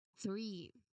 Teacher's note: So the th sound here is voiceless. No, no vibrations at all.